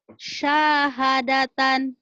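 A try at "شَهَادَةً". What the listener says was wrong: Pendek. Pendek. Pendek tahu pendek? Pendek. Pendek tahu? Pendek syahnya. Syahadatan. Syahadatan, nggak boleh mentang-mentang lagu. Syahadatan, ngaco ya.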